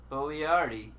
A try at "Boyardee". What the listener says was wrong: You added too many syllables. No, just Boyardee. D-I. The long A. Boyardi. It's spelled phonetically right there. BOY-AR-DEE. Boyardi is right next to it.